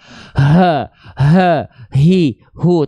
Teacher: hak besar dilafalkan istilahnya dari aqsal halqi